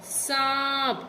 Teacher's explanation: इसका उच्चारण नाक और गले से होता है। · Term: अनुनासिक